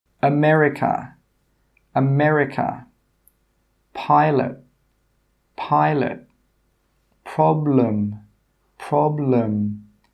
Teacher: the schwa sound, your tongue goes to the middle of your mouth. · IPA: ə